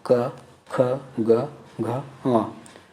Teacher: क जैसे ही बोलते हैं तो स्वर यंत्री से जो हवा निकल रही है वो आपके कंठ में जाके टकरा रही है, वहाँ से प्रेशर जनरेट हो रही है।